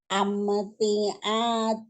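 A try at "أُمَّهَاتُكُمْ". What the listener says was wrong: Nggak ada yang panjang. Jangan tawalud. Masih sering tawalud. kan dibilang setiap huruf-huruf sukun yang kayak gini itu biasanya cenderung kalau tidak hati-hati dia akan tawalud.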